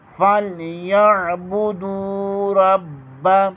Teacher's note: فَلْيَعْبُدُوا رَبَّ، را کو پر پڑھیں گے، را کو با کے ساتھ ملائیں گے، با کے اوپر شد ہے، یہاں پر کلکلہ ہوگا، جہاں کلکلہ مشدد ہو کلکلہ جماؤ کے ساتھ ادا کیا جاتا ہے